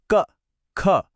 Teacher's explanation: यह वो ध्वनियां हैं जिनका उच्चारण जिनकी आवाज सीधे गले से मतलब कंठ से आती है। जब हम इन्हें बोलते हैं ना तो एक वाइब्रेशन, एक कंपन गले के पिछले हिस्से में महसूस होना चाहिए। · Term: कंठ वर्ण